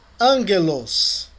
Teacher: O encontro de um gama com outra gutural é pronunciado como N.